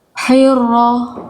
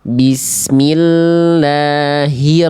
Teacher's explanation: ro memang tidak boleh getarannya banyak-banyak hirro, tapi juga boleh hilang getarannya, tetap ada.